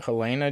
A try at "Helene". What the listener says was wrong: Helena is an A at the end.